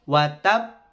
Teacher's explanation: Wa tab. Itu ada tasydid, maka cara bacanya adalah ditahan dulu ya, dihentak di ba-nya ya, wa tab baru dipantulkan. Jadi tahan wa tab, ditahan kemudian baru dipantulkan. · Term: qalqalah akbar